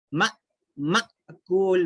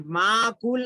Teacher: اور ایک چیز دیکھیے یہاں پر غور کریے، میم کے بعد الف ہے، الف کے اوپر جزم ہے، تو اس کو بولتے ہیں حمزہ ساکنہ، حمزہ ساکنہ، الف کے اوپر جزم آ گیا تو اس کو حمزہ ساکنہ بولتے ہیں۔ تو یہ حمزہ ساکنہ کو جھٹکا دے کے پڑھنا ہوتا ہے